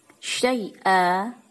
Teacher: Syai'a disebut bacaan mad iwad sebab terdapat harokat fathatain yang dibaca panjang satu alif karena waqaf